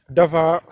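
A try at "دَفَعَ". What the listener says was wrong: Dafa'a. Attention, bien prononcer l'aïn.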